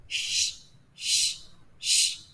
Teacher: while pronouncing letter Sheen there's a spreading sound · The letter sheen is pronounced from the middle of the tongue when it is raised to the roof of the mouth and what lies opposite to it. With a small space to release some air, it means we do not touch the roof of the tongue, palate.